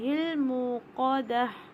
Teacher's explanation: موقدہ میں تا مربوطہ ہے تو یہ بھی ہاں میں تبدیل ہو جائے گا جب ہم وقف کریں گے